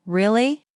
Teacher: when they are surprised, their voice goes up.